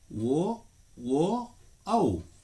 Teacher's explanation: ಕಂಠ ಮತ್ತು ಓಷ್ಠ್ಯ, ಕಂಠ ಮತ್ತು ತುಟಿಗಳ ಸಹಾಯದಿಂದ ಉತ್ಪತ್ತಿಯಾಗುವ ವರ್ಣಗಳನ್ನು ಕಂಠೋಷ್ಠ ವರ್ಣಗಳು ಎನ್ನುವರು.